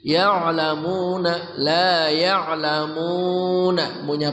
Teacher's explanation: Ain dari tengah kerongkongan